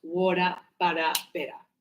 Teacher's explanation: Because here we have vowel, vowel. So the T in this case is going to sound like D.